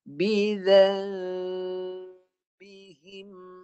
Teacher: Nun ni tukar lafaz mim, bibir jangan rapat sangat.